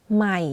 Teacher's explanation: You can hear that my voice goes in a lower pitch when pronouncing the word. · One similarity of this tone to the middle tone is the voice is constant, but for low tone, you add a slight falling low pitch.